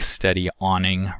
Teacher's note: in the case of steady awning the glottal stop is used to indicate the onset of awning